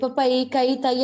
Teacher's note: 'ai' தனித்து நிற்கும் போது சுருங்குவதில்லை.